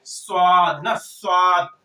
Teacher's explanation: اس کی ادائیگی میں سیٹی کی آواز تو آئے گی صاد نا, صاد, لیکن یہ پر بھی پڑھا جائے گا, پر بھی پڑھا جائے گا, کیونکہ یہ صفیریہ میں تو ہے ہی لیکن یہ مستعلیہ میں بھی ہے. تو اس کی ادائیگی میں سیٹی کے ساتھ ساتھ آواز جو ہے موٹی بھی ہوگی, آواز موٹی بھی ہوگی, یہ خیال رکھنا ہے آپ لوگوں کو. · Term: حروف صفیریہ